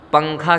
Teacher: جیسے اردو میں پنکھا کے نون کو پڑھتے ہیں، پنکھا کا نون جو ہے وہ اس کی آواز جو ہوتی ہے وہ ناک میں چلی جاتی ہے اور زبان تالو پہ بھی نہیں لگتی ہے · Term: اخفاء